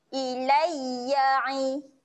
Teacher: ya kat sini kita akan baca dia dengan pendek saja satu harakat ilai jangan panjangkan bunyi ya tu ilai ya Ba panjangkan dua